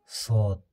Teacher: Сот әрпі тілдің ұшы сол мана син шығатын жерге, яғни алдыңғы үстіңгі тіске тиіп жуан түрде оқылады.